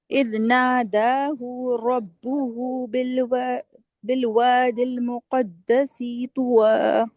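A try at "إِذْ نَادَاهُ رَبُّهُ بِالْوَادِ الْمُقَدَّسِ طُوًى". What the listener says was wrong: بالوادي المقدس طوى. سی لمبا نہیں کرے. مقدس طوى.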